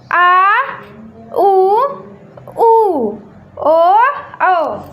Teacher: जिन स्वरों के उच्चारण में जीभ के पीछे का हिस्सा उठता है। पश्च स्वर कहलाता है।